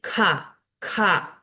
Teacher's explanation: como agregando un poquito más de aire después de la pronunciación de la K